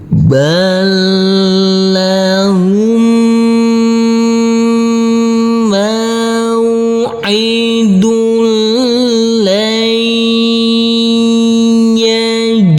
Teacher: huruf nun ini nanti kita baca dengan samarsamar dan berdengung pada waktu berdengung persiapan masuk ke huruf Dal nanti kita berhenti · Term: ikhfa